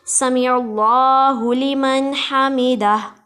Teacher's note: हमीदा में हा को हलक से अदा करेंगे